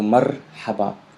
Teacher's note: there's a ra in the middle, and Spanish R. So not like an English R. · there is a pause between the first syllable mar and then ha ba